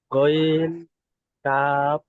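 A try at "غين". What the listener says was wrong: গইনটা কি কেমন করে টান দিয়ে পড়তে হয়েছিল, আপনি যেমন পড়লেন কি এরকম পড়িয়েছিলাম আমি? জি, পড়েন, টান দিতে হবে, যে অক্ষরটি যতটা পরিমাণ টান দিয়ে পড়িয়েছিলাম আপনার ঠিক অতটা পরিমাণ টান দিয়ে আপনাদের পড়তে হবে।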